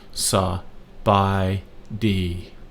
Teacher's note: These other two on bi and D have no tone markers, therefore they are flat or normal, which is your normal speaking voice.